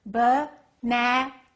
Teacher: In this case, banana, the second syllable is stressed, so we would say it like this, banana.